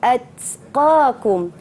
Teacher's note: ini bukan qalqalah, jangan lantunkan, jangan bunyi at, tapi atqakum